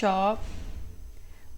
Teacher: तो तालव्य में बोला जाता है श